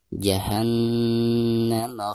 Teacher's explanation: Jahannam, nun yang bertasdid itu merupakan huruf gunnah ya, maka cara membacanya itu harus ditekankan dari bacaan ha ke na disertai dengan gunnah. Jahannam dibaca 2 harokat dihukumi mad tabi'i.